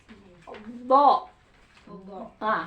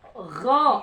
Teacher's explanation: Ee terangkatnya pangkal lidah. Terangkat pangkal lidah. Jadi, terkesan tebal. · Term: istila